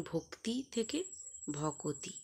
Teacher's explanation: একটি অ স্বরধ্বনির আগমন ঘটেছে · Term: মধ্য স্বরাগম